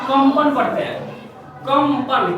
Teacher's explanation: क्यों? क्योंकि इस अनुस्वार से आगे क्या है प, तो प का पंचम वर्ण यानी कि म हो जाएगा, होगा ना? तो ये हम पढ़ेंगे इसको कंपन।